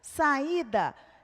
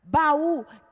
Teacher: Encontro de 2 vogais e elas são pronunciadas em sílabas separadas.